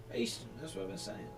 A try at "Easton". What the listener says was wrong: You put an R in there. You said Easton.